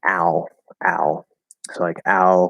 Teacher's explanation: the half l um which is normally the dark l is very close in position to ah it's just a little bit up and a little bit forward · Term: l colored ah